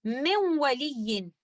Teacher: ادغام کامل نہیں بلکہ ادغام ناقص کے قاعدہ کو فالو کریں گے، جس کا مطلب یہ ہے کہ پہلے والے حرف کی کوئی صفت باقی رہ جائے گی تو یہاں پر نون ساکنہ کی صفت غنہ رہ جائے گی